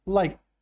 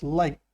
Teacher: So for like, if you're talking about the past, we add a D, liked. It makes a T sound, liked. Same for the past participle.